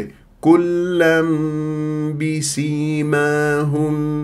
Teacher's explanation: الف ساكن قبلها ميم مفتوح ما الطبيعي حركتين فاذا ننتبه كلا كلا كلا بسيماهم هكذا بهذه الطريقه هم مرققه